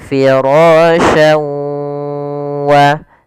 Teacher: memasukkan huruf tanwin pada lafal syan ke huruf waw, kemudian digunnahkan, ditahan. Karena idgham bi gunnah artinya memasukkan disertai dengan gunnah.